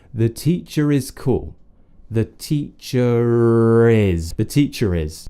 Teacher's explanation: we can use that R to connect our speech, and it will sound completely British